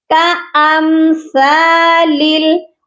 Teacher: حمزہ کو ہم نے میم ساکن کے ساتھ ملانا ہے، کَأَم پڑھا جائے گا، کا لمبا نہیں ہوگا